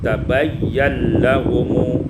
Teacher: Pada ayat 109 tabayyana lahum idghamun nun fil lam diidghamkan nun pada lam maka kita membacanya tabayyan lahum